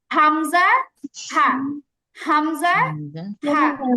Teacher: আ এবং হা দুইটা উচ্চারণই আসছে একদম গলার নিচের থেকে